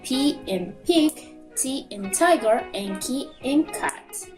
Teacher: Finally, we have voice and voiceless sound. The vocal cords don't vibrate.